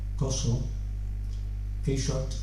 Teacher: La A al final puede pronunciarse más redondeada hacia O